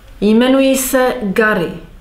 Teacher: You have noticed that the se was unstressed. It was an enclitikum.